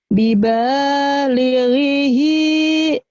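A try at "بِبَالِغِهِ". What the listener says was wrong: Ayo, nya pendek. Nah, gitu bagus. Bibalighihi.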